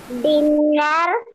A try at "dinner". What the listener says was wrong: Don't say dinner. R is not needed. Dinner. Dinner.